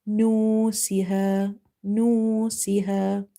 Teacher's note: Aw, no siha, noon, noon dama no, sin kasra si, no si. We are doing ikhfa here, meaning we are hiding this noon sakin sound.